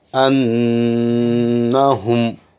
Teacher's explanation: نون پر جب بھی تشدید ہو تو نون کو ایک الف یا 2 حرکت تک پڑھیں گے، جس سے نون کی آواز ناک میں گھومے گی، جسے غنہ کہتے ہیں۔